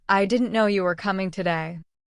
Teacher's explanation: two main beats, didn't and coming. The rest of the words were soft, almost like shadows. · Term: stress